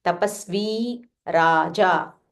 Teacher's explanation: So half sa and this va is Dirgha. This V is Dirgha, so you have to say V.